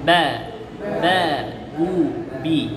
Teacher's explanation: বা 2 ঠোঁট পরস্পর মিলিয়ে বা।